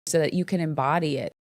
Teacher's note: she reduces the vowel in the verb can